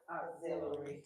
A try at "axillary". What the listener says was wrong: Take that U out. Auxiliary is a cord. It's an extension. Axillary. It is axillary.